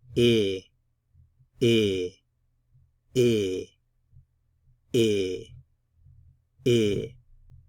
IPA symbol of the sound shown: ɪ